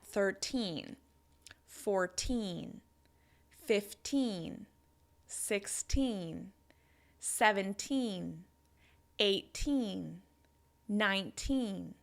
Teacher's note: You can hear that teen is stressed, which means it's longer, louder and higher in pitch than the number.